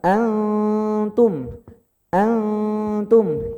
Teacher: N-nya itu, nun-nya itu samar, remang-remang. Jadi jangan baca antum, jangan N. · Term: ikhfa